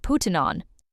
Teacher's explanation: In the recording, putting on was spoken very fast. It sounded like puttin' on. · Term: connected speech